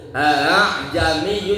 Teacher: Yaitu huruf hamzah kedua dibaca antara huruf hamzah dan a- alif. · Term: tas-hil